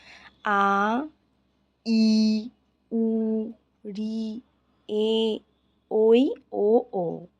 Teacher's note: এই আটটি স্বরবর্ণের উচ্চারণ হ্রস্ব স্বর অপেক্ষা বেশি সময় লাগে বলে এদের দীর্ঘস্বর বলা হয়